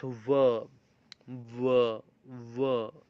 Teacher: So that vibration happens for small period of time, and it creates a friction between the upper teeth and the lower lip again. But that airflow is constricted through the vocal tract itself. · You can feel the vibration also when you say v. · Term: fricative